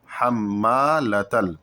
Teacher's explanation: تشدید ہے، تو یہاں پر بھی غنہ ہوگا، اور میم کے بعد الف ہے تو اس کو ہلکا سا 1 الف کے برابر کھینچیں گے